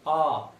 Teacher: विवृत स्वर जिन स्वरों के उच्चारण में मुख्य द्वार पूरा खुलता है